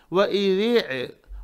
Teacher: ذال کے لیے زبان تھوڑی باہر نکالیں گے اوپر اور نیچے کے 2 دانتوں کے ، وَإِذِ، اور عین اندر سے نکالنا ہے، وَإِذِ عین، وَإِذِ